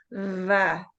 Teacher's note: the English va that you use with your front teeth over your lip